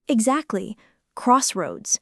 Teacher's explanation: the first syllable carries slightly more weight than the second.